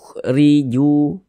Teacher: Nah, kemudian di sini huruf ra kalau dia memiliki harokat kasrah, ini baris 1 ke bawah harokat kasrah, maka huruf ra dibaca tipis, dibaca tarkik, sehingga pangkal lisan kita jangan naik ke atas tipis. Riju, tipiskan huruf ra-nya.